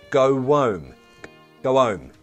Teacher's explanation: They connected and become like one word. Go home, okay? With a w sound. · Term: connected speech